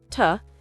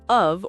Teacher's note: two becomes tuh, and becomes und, of becomes uv or even just v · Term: reduced vowels